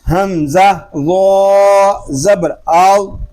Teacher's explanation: اب یہ غا حروف مستعلیہ میں سے ہے، اس کو پر یعنی موٹا پڑھیں گے۔ حمزہ غا زبر آو، اس کو حمزہ غا زبر غا زبر غا اس طرح نہیں پڑھیں گے، اپنے اندر ٹھہراؤ پیدا کرنے کی کوشش کریں اور اس کو سکون کے ساتھ ادا کریں، جلدی نہیں کرنی ہے آپ نے۔